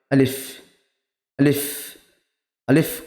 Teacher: আলিফ এর মাখরাজ কি মুখের খালি অংশ হতে উচ্চারিত হয়